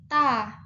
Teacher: lidah kita itu ditaruh di gusi · Selanjutnya dari daerah artikulasinya itu masih infijar atau adanya letupan kecil. Nah, posisi pita suaranya itu mahmus atau tidak bersuara, tidak adanya getaran